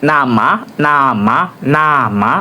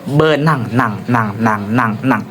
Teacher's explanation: Udara keluar melalui hidung. Nah, udaranya itu keluar melalui bagian lubang hidung.